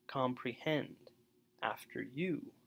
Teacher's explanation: anapests so that's unstressed unstressed stressed